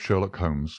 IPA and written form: ˈʃɜːrlɒk ˈhoʊmz (Sherlock Holmes)